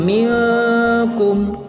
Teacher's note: terdapat hukum bacaan ikhfa karena nun mati bertemu dengan kaf, dibacanya dengung masuk ke hidung